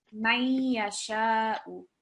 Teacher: So that means that we can partially hear the Noon sound when we join it, but we can't completely hear it. So this Noon is merged into the sound of the Ya Mushaddad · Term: partial assimilation